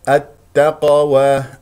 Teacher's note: القاف قلقله صغرى وسط الكلام ولا تنسى تفخيم القاف مرتبه رابعه